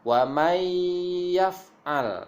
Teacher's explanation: Jadi nunnya tidak terbaca, dia akan masuk kepada huruf ya. Nah, ini namanya idgham bi gunnah.